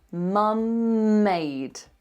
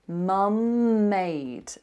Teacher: when you've got the same continuous consonant next to each other, like mum made, what you need to do is hold the continuous consonant and just give it a little push